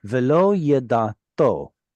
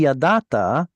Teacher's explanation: because of the vav on the end, it pulls that ah vowel into an o.